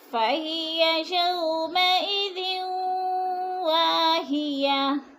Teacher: اور وا کو کھینچ کر پڑھیں گے، الف مدہ ہے، ہیاتن، دو پیش کو وقف کی صورت میں جزم میں بدل کر پڑھیں گے۔